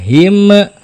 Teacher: di mana makhraj huruf mim itu kedua bibir ya kedua bibir tertutup ya